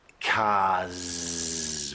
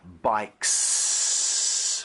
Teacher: So cars would be a voiced one. Bikes would be unvoiced.